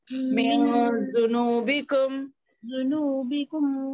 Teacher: نون ساکن کے بعد دال آئے تو نون کو ناک میں چھپاتے آواز کو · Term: اخفاء